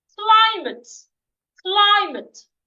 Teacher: Climate has two syllables and it's a noun. So I'm stressing the first syllable. That is why the C, the L, and the I are written in capital letter.